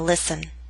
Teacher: listen is one of those words in which we always omit the T sound